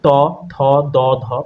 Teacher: ত, থ, দ, ধ, অর্থাৎ আমাদের জিভটা দাঁতের ওপরের পাটির সাথে লাগে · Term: দন্ত স্পৃষ্ট ব্যঞ্জন